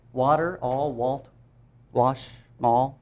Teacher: The L and the W are integral to the ah sound for A.